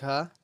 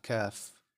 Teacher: it's on the apex of the palatine process and it's very similar to the English C if you say the word ka in English ka and then